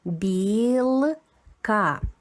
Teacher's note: Б звучить м'якенько. Буквочка і зм'ячує.